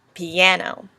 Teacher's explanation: Piano has first an unstressed, a stressed, and then an unstressed syllable.